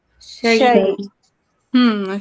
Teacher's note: ایک تو لمبا نہیں کرنا، دوسرا جھٹکا بھی نہیں دینا، ٹھیک ہے، مشدد حرف نہ پیدا ہو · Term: وقف الاسکان